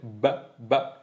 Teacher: es sonoro porque si te pones los dedos en la garganta sientes como tiembla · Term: sonido B